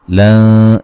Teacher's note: यहाँ नून साकिन का इख्फा है, बारीक